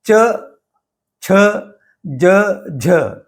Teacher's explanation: जीभ दांत और तालु इन दोनों को स्पर्श करती है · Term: दंत तालव्य व्यंजन